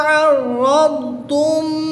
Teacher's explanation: رام مشدد پر زبر ہے تو اس لیے اس را کو پر یعنی موٹا پڑھیں گے